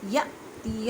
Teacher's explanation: حمزہ ساکن ہے اس وجہ سے اسے جھٹکا دے کے پڑھیں گے